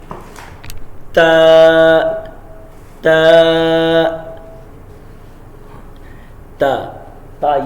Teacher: یہ زبان کی نوک اوپر والے جو سامنے کے دو دانت ہیں ان کی جو نوک ہے اس کے ساتھ ٹچ کریں گے